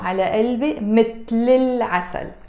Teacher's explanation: And you notice I'm not saying مثل العسل. I'm pronouncing it with a liaison.